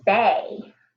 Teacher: The first syllable in basic says bay. Do you hear that long A sound? And the last syllable in basic is sick.